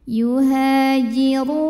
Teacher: huruf ra dibunyikan secara tafkhim karena berbaris dhammah, maka ini dibunyikan dengan tebal. Yuhajiru, ru mad tabi'i dhahiri, karena ada waw sukun didahului baris dhammah. · ru mad tabi'i dhahiri, karena ada waw sukun didahului baris dhammah. Cara bacanya dipanjangkan ra-nya 2 harokat.